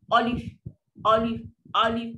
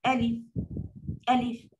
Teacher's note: Mesti sebut alif. Dan mesti bukan o. Alif, alif, alif. Dia bukan besar, dia sekadar buka.